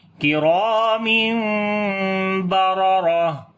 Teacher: اخفاء شفوی ہوتا ہے، یعنی میم کی آواز کو چھپا کر پڑھیں گے، تو آواز آئے گی کرام بررہ، دونوں را کو موٹا پڑھیں گے اور جب رکیں گے تو ہا کے اوپر صفت ہمس آ جائے گی کیونکہ تا ہا بن جاتی ہے، تو پڑھیں گے کرام بررہ۔